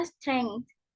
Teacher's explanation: kita tuh biasanya menyisipkan tanda berhenti tak bersuara di antara sengau dan frikatif